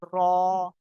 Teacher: জীভের আগার উল্টা পিঠ এবং তার বরাবার উপরের তালুর সাথে লাগিয়ে উচ্চারিত হয় র